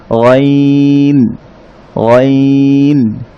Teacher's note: মুখমণ্ডল থেকে শুরু হয়ে যখন প্রথম কণ্ঠনালী শুরু হয় যে জায়গা থেকে, সেখান থেকে উচ্চারণ হয়